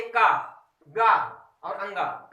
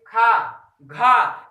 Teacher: खा, घा, देखिए घर्षण टाइप में ऊर्जा ज्यादा निकल रही है, इसलिए महाप्राण